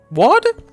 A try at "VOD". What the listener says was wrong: It has a V, bro. you're doing a reverse German. Yeah, VOD. Yeah, but just a second ago you said WAD. I swear you're saying WAD. You're saying WAD as in W. VOD and WAD do not...